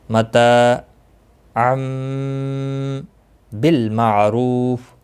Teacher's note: تنوین کے بعد متحرک با آیا ہے، یہاں پر میم کتنی آپ دیکھ رہے ہیں چھوٹا سا، یہاں پر قلب ہوگا، اخفاء شفوی ہوگا، غنہ کے ساتھ پڑھیں گے